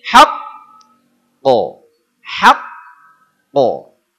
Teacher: Jadi seolah dedet heula ku tasydid baru mantul. Jadi kalau kita gambarkan ada kelereng masuk bantal. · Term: qalqalah kubro